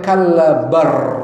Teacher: lam bertemu ro itu menjadi idgham